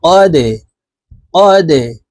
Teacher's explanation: জজম হইলে ধাক্কা দিয়ে কলকলা করিয়া পড়িতে হয় তো এই দালটি কলকলার হরফ কফ দালের সাথে ধাক্কা দিয়ে উচ্চারণ করব